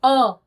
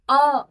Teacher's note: जैसे अ हमने गले से बोला तो किसी भी भाग को टच नहीं किया। सीधे गले से अ आवाज सुर बाहर निकला और आपके कान तक पहुंचा। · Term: स्वर